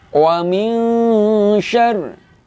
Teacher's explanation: pembacanya adalah ikhfa hakiki. Artinya dibaca dengan samar-samar.